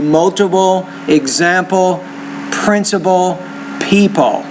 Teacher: So put the schwa and then an L at the end